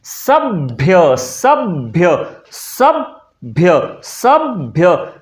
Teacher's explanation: भ के पहले ब का उच्चारण किया जाता है। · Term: आगम ध्वनियां